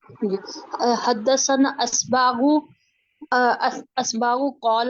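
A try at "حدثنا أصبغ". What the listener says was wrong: یہاں پہ دیکھیں آئین نہیں ہے، کیا ہے؟ غوین ہے. پہلے دیکھیں حدثنا کے بعد کیا ہے دیکھیں.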